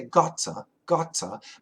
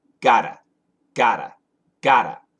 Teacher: In the UK, British people might say gotta, gotta. But in America, we use a flap T and we say gotta, gotta, gotta.